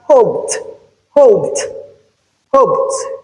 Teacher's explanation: this ed is realized as T because of the P sound that comes before it. So we have T here because of T the voiceless sound. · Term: Progressive assimulation, progressive assimilation